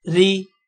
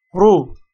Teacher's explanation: اگر را کے نیچے زیر ہوگی تو را کو تب موٹا نہیں کریں گے، زبر اور پیش کی کنڈیشن میں را کو موٹا کرنا ہے